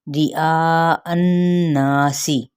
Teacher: حمزہ یہاں پہ چار حرکت لمبا کریں گے، حمزہ کے زبر کو نون کے ساتھ ملاتے ہوئے غنہ، غنہ کے ساتھ الف مدہ کا قاعدہ، سین کی حرکت کو لمبا نہیں کریں گے۔